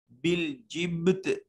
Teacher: با ساکن ہے قلقلہ واجب ہوگا